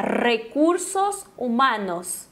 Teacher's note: tremendo a língua no céu da boca